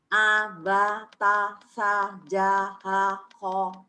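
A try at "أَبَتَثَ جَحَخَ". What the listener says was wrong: A-nya Bu. Jangan A Jawa ya. A Sunda. A.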